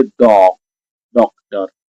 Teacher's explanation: हम इसमें से हल्की सी आवाज आ की और हल्की सी आवाज औ की लेते हैं, तब जाके हमारा औ बनता है